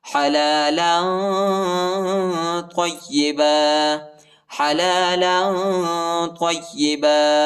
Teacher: یا کو شدت کے ساتھ سختی کے ساتھ پڑھیں گے